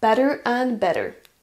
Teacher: Better and better. Notez qu'on ne dira pas and en le prononçant avec la forme forte, la forme strong.